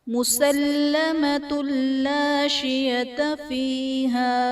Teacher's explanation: مسلمۃ لا شیۃ فیہا، مسلمۃ اللہ میں تا پر دو پیش کی تنوین، تنوین کے بعد حروف یرملون میں سے لام ہے تو یہاں پر ادغام بلا غنہ کا قاعدہ ہوگا، یعنی تنوین میں ہم غنہ نہیں کریں گے